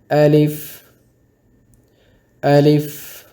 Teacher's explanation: الف کو پڑھتے ہوئے آپ نے اس بات کا خیال رکھنا ہے کہ الف کو لمبا نہیں کریں گے اور اسی طرح الف کو مجہول نہیں پڑھیں گے.